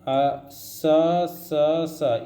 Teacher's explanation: इनसे इनको ऊष्म व्यंजन या संघर्षी व्यंजन कहते हैं, क्योंकि ये मुंह से रगड़ के निकलते हैं।